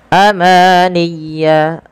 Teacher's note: ma sempurnakan 2 harakat ya karena dia mad tabi'i